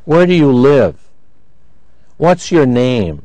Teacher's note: notice information questions have a rising falling intonation pattern